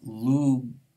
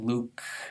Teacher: Any voiced stop, not just a g, will be voiced if it's in the onset position, gol, but it will become voiceless in the coda position, luk. So the difference between lug, which means meadow, and luk, which means onion, is lost in Russian because g gets pronounced as a k